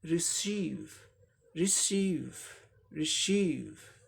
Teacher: तो ये वर्ब है, सेकंड सिलेबल पे स्ट्रेस है, इसको जोड़ दे के बोलना है